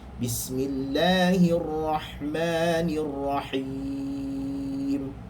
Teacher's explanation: dipanjangkan him kerana dia man'arid lis-sukun